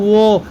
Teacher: इसके उच्चारण में हमारे मुंह का दांत और होंठ यूज होता है।